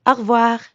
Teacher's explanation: when French speakers say au revoir quickly, it can sound like one word